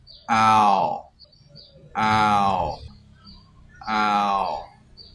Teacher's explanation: Ow has long sound. Open your mouth and close it slowly in O shape while you pronounce this vowel. You feel vibration at the back of your tongue.